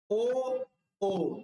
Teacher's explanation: वृत्ताकार या वृत्तमुखी स्वर ऐसे स्वर हैं जिनका उच्चारण करने पर ओष्ठों का आकार गोल हो जाता है।